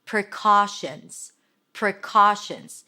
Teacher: It's a shh sound an N and a Z.